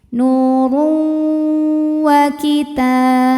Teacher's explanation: ada tanwin dhammah menghadapi huruf waw, maka tanwin masuk ke waw. Nuru sambil ditahan didengungkan. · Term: idgham bi gunnah